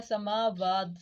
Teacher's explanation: سما کو 1 الف کے برابر لمبا کریں گے، واو کو بھی 1 الف کے برابر لمبا کریں گے، تا پہ ہمارا وقف ہو رہا ہے، سبع سماوات وہو بکل شیء علیم، شئی پہ ہمارا یا لین ہو رہا ہے، علیم پہ ہمارا یا مدہ ہو رہا ہے، اور آگے آیت مکمل ہو رہی ہے۔